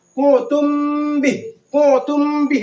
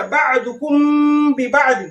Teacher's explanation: دونوں ہونٹ سٹے گا غنہ کے ساتھ. غنہ بھی کریں گے، ناک میں آواز جائے گی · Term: اخفاء شفوی